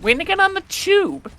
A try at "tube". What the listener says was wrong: On the tube. Not there's no C in the word tube.